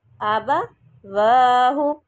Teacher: अब मैंने वाव को सिर्फ लंबा किया, बाकी दोनों के ऊपर ज़बर है, हमज़ा पे भी बा पे भी, उनको लंबा नहीं किया। और हा पे पेश है, उसको भी बिल्कुल लंबा नहीं करना।